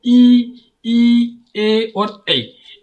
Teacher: जिन स्वरों के उच्चारण में जीभ का अग्रभाग काम करता है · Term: अग्रस्वर